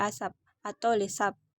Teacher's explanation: kata asap ataupun lesap bahkan p-nya ada di belakang itu tidak diucapkan secara meletup atau nama lainnya impolosif selanjutnya jenis-jenis fonem ada empat jenis fonem